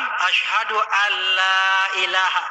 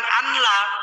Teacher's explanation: Kan idgham artinya memasukkan kan ya. Suara nun dimasukkan ke dalam huruf lam. Bukan lom ya, lam.